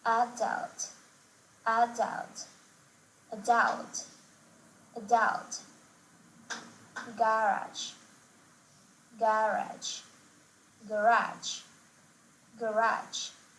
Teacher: Some words, particularly those of French origin, are emphasized differently in American English, with the last syllable stress in American English and the first syllable stress in British English